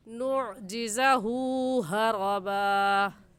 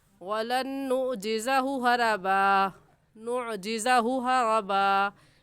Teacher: और ऐसे पढ़ेंगे वलन नुअजिज़हु, हु के ऊपर उल्टा पेश है और उल्टा पेश को एक अलिफ की मिकदार खींच कर पढ़ते हैं, तो खींच कर पढ़ेंगे।